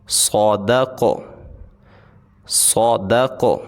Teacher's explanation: قاف کو موٹا بھی پڑھیں گے اور اس کو ہم نے ہلا کے بھی پڑھنا ہے۔